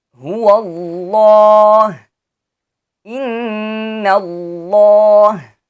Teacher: जब लफ्ज़ अल्लाह से पहले ज़बर या पेश हो तो इसे मोटा पढ़ेंगे, जैसे कुल हुवल्लाहु अहद, इन्नल्लाह। और when the word Allah is preceded by a fatha or dhamma, it is to be pronounced with heavy sound.